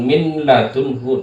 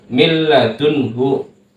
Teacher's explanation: dalam mil millatunhu ini ada nun mati bertemu dengan huruf lam maka hukum Bacanya adalah idgham idgham bila ghunah dileburkan